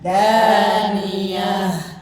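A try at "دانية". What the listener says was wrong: Iya-nya jangan dipanjangin. Justru yang ngalir itu Jangan dianya daniyah. Jangan di ayun-ayun ya. Justru haknya yang dialirin.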